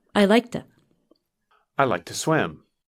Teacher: When we say it quickly, the word to is pronounced ta.